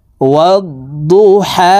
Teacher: হা হরফের উচ্চারণ হলকের মধ্যখান থেকে পড়তে হবে